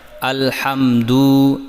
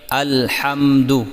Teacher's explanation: لام پر آواز کو واضح رکھیں اور دال کی پیش کو بالکل لمبا نہ کریں تاکہ واو پیدا نہ ہو